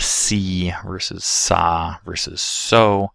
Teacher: spreading the lips during the S for see, rounding lips during the S for so, the lips remaining relatively neutral for saw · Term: coarticulation